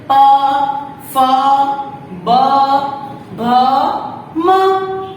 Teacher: प से म तक वो सारे ओष्ठव्य है, यानी कि हमारी होठों की मदद से बोले जाते हैं